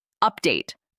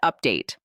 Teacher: The word update. Stress the first syllable. Update, not update.